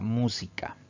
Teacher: la palabra música Si dividimos en sílabas tiene también tres sílabas al pronunciar esta palabra la mayor fuerza de voz recae en la antepenúltima sílaba · Al pronunciar esta palabra, la mayor fuerza de voz recae en la antepenúltima sílaba, contando siempre de derecha a izquierda. Entonces nos damos cuenta que es una palabra esdrújula.